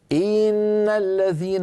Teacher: الان انا تعمدت تطويل كسره ان فتولد منها ياء منطوقه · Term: الادخال